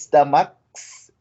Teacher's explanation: The S is sounding as s because of the k, which is voiceless.